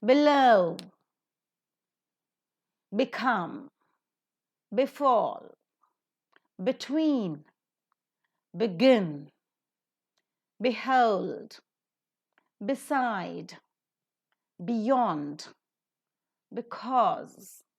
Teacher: if the words are beginning with b e then also the root word is stressed